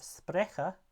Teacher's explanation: another front vowel this time it's the mid front tense vowel which and it's long as well which precedes the palette of